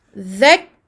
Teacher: Je bloque au niveau du point de sortie du kaf, qui est donc le fond de la langue. Dhak. Je ne fais pas sortir ici de souffle.